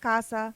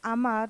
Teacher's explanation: The letter A is pronounced like the A in father. It is an open sound and that is commonly found in words like casa means house and amar means to love.